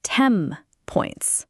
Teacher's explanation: >> A classic one is the phrase 10 points. The n sound at the end of 10 is often pronounced as an m sound before a p or b. Why? Because m and p are both made with your lips. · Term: assimilation